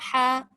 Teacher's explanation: Sebab ha dengan ha ni tempat keluar dia di bahagian halkum. Pertengahan halkum ha, pangkal halkum ha.